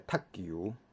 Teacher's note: 踢嘛是第四声，踢球伊会变第八声